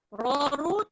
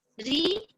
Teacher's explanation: Raw, ru, tebal, ri, nipis.